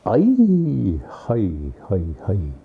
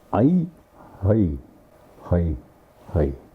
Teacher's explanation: it's a high sound. Ai, ai, ah, kind of a guttural. And then you come down. Ai, hi, hi, hi.